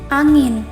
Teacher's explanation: ini berada di tengah kata fonem ini eh masuk ke dalam bunyi dorsovelar yang di mana adanya pertemuan antara pangkal lidah dan langit langit lunak